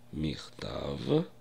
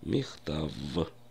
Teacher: Обратите внимание как Я произношу слово письмо хта в потому что в русском языке многие произносят Ф В конце слова вместо звука в